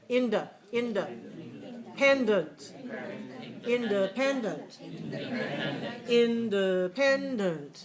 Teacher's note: So in and n are both clear. But how about the vowel in the second syllable, the vowel in the fourth syllable? They're reduced.